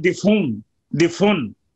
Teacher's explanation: इमाम हमजा दिफ उन में हमजा की जो तनवीन है वो फे को दे देते हैं और हमजा को हजफ कर देते हैं, वो पढ़ते हैं दिफुन दिफुन, दिफ उन के बजाय दिफुन पढ़ते हैं। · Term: नकल हरकत